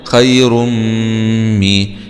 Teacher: راء ضمتين مع الإدغام في الميم المشددة مع الكسر لأن الميم من حروف كلمة ينمو إدغام بغنة